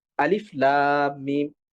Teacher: শুধুমাত্র আলিফ এই হরফটার নামই উচ্চারণ করি, কোনো ধরনের মাদ করি না। যেরকম আমরা এরকম বলি না আলিফ, বরং আমরা বলি আলিফ লাম মিম।